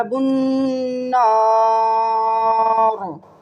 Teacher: با کو نون سے ملایا اور نون گننا کیا